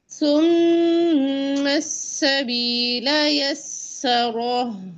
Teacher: रॉ को आपने पुट पढ़ना है, ठीक है, रा नहीं पढ़ना, रॉ पढ़ेंगे, रॉ। गौर से सुने।